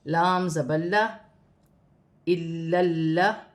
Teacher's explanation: پہلے حمزہ کے ساتھ لام کو ملایا جائے گا، پھر لام کو لام کے ساتھ ملا کر پڑھا جائے گا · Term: لام مشدد